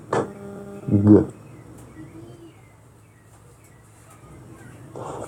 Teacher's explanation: Velar sounds are produced at the velum or soft palate, such as k, g.